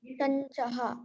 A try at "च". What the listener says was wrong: So when I'm hearing you, I'm hearing a little bit more air coming out, aspiration.